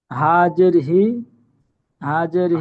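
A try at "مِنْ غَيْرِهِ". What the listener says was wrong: হা নয়, মিম নুন জের মিন। গইন ইয়া জবর গই, মিন গই। গইন ইয়া জবর গই, র জের রি, মিন গইরি, হা খারা জের হি, মিন গইরিহি, মিন গইরিহি। আচ্ছা, এখানে নুন সাকিনের পরে গইন এসেছে, কি কায়দা?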